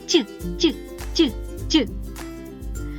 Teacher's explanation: середня частина спинки язика впирається у тверде поднябіння створюючим самим перешкоду для повітря що виходить з ротика потім ця Змичка розривається повітря виходить на зовні і ми чуємо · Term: м'який звук ть